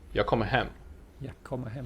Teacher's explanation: The last word has a sentence emphasis, while the two former words are unstressed and thus blend together.